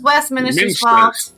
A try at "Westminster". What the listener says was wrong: It's pronounced Westminster. It's not Minister. Westminster. There's no extra I. You're putting an extra I in there.